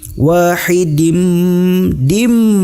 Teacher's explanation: Idgham Bighunnah ditahan dengan dengung kehidung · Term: idgham bigunnah